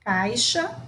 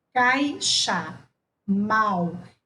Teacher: a vogal é pronunciada mais forte do que a semivogal